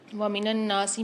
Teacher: وَمِنَ النَّاسِ میں نون پر مشدد ہے تو یہاں پر غنہ کر کے پڑھیں گے، ایک الف میں دار کھینچ کے پڑھیں گے نون کو